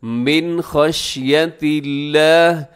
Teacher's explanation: من میں نون ساکن کے بعد خا آ رہا ہے تو جو کہ حروف حلقی میں سے ہے، یہاں غنہ نہ کیجیے گا